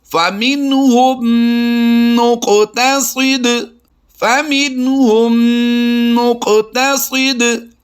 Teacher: یہاں پر قاف اور صاد کو پر کریں گے، اور قاف میں اور دال میں ہم نے قلقلہ بھی کرنا ہے، کیونکہ یہ دونوں حروف قلقلہ سے ہیں اور ساکن ہیں۔ میم ساکن کے بعد دوسری میم ہے تو یہاں پر ہم نے ادغام شفوی کرتے ہوئے غنہ کی آواز کرنی ہے، اور نون ساکن کے بعد آپ جو فَمِنْهُمْ میں نون ساکن دیکھ رہے ہیں، اس کے بعد حروف حلقی میں سے ہا آ گیا تو ہم یہاں پر اظہار کریں گے۔